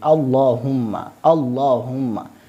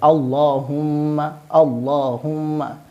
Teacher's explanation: تو لہذا اس اللہم میں جو لفظ اللہ ہے اس کو ہم موٹا پڑھیں گے، اور اس کے آخر میں جو میم ہے اس میں ہم غنہ کریں گے